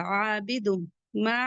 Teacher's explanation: तनवीन के बाद मीम आ रहा है इदगाम माल गुना होगा